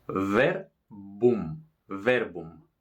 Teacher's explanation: la B se llama bilabial porque tocan los dos labios